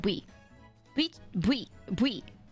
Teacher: When you say VTuber in Korean, you don't say V, you say bui.